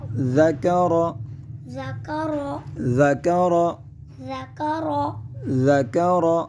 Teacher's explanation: یہاں پہ ہم ذال کو بغیر سٹی کے ساتھ ادا کریں گے، جبکہ را کو پر پڑھا جائے گا کیونکہ را پر زبر ہے۔